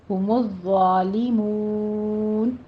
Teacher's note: ہم الظالمون میں ضا کے پر تشدید ہے، ہم الظالمون نہیں کہنا، ضا پڑھنا ہے، ہم الظالمون، ضا میں سیٹی کی آواز نہیں آئے گی اور اس کو پر بھی پڑھنا ہے۔ آگے مون میں آپ نے مو جیسے بو کہتے ہیں اس طرح اسٹریٹ آواز رکھنی ہے، اس کی آواز ناک میں نہیں جانی چاہیے، منہ نہیں ہونا چاہیے۔